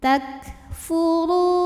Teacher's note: untuk kaf-nya yang sukun keluar anginnya ini terakhir ya setelah keluarnya suara takfuru huruf ro dibunyikan secara tafkhim karena ro berbaris di atas